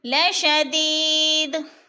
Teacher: لشدید پہ یا مدہ ہے، یا ساکن سے پہلے دال کے نیچے زیر، تو یا مدہ کو ایک الف کے برابر کھینچ کر پڑھنا ہے